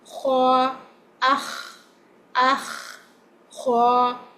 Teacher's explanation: Kha is heavy and it has a slight scratching sound in it